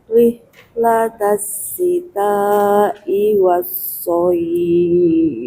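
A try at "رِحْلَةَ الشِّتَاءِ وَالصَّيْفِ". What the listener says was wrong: Sitanya kurang.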